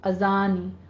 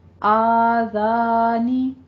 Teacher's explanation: الف مد ادا کیجئے، فتح قائمہ ہے